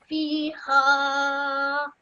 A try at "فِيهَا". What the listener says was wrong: Well done.